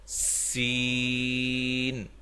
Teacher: اس میں باریک سیٹی ہے، باریک سیٹی کی آواز